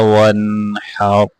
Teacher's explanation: حا کو واضح کرنا ہے، را کو موٹا کر کے پڑھنا ہے۔